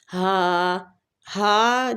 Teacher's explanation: یہ ہا جو ہے یہ سینے والی سائڈ سے حلق کے سب سے نیچے والے حصے سے ادا ہوتی ہے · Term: اقص الحلق